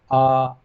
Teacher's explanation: आ का उच्चारण करते हैं तब हमारा मुख बिल्कुल अच्छी तरह से खुला होता है